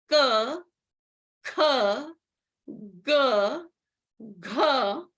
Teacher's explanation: the consonants k, k, g, gh, are coming from the throat, and they are called gutturals